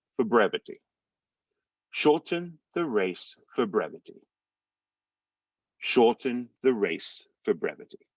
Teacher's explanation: so it's going to sound like f o or for brevity it's almost like you're running them together and saying four brevity is one word without the r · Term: final r